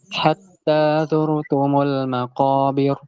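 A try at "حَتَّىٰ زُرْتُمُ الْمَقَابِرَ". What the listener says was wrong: Nah maqobirnya masih kayak tafkhim maqobir Nah jadi bisa bisa kedengaran ya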